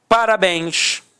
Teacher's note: Repare que a sílaba tônica é a última e é terminada em ens. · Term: oxítona